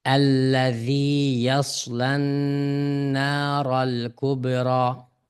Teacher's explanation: Bu yerdeki na nun harfini to'xtaymiz. Nun ustida ixfa mal g'unna. Ya'ni g'unni ixfa o'qiymiz.